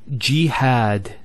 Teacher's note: we have a Fatah on the ha followed by the Aleph and that gives the elongation of the a sound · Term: long vowels